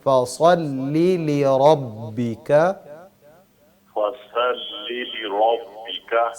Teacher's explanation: یہ جو صاد ہے بس اس کو تھوڑا سا موٹا کرنا ہے، لام باریک ہے